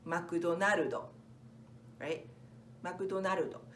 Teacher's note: for katakana English we have the emphasis on na